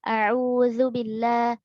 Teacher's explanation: ikhtilas, yaitu mengurangi kadar harokat